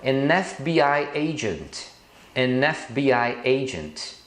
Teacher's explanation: quando você pronuncia F, o primeiro som é de um som de E, de vogal. Por isso você usa NF.